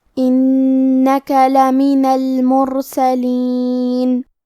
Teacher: کلمت المرسلین میں حرف را کا حکم ہے تفخیم تو ہمیں را کو موٹی آواز میں پڑھنا ہے